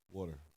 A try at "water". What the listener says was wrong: You said war. War, like a wart.